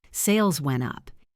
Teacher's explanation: you stress the word up